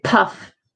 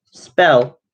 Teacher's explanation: if you say puff you'll feel the paper move whereas if you say spell you will notice that the paper doesn't move and that's because the p and spell bell is unaspirated am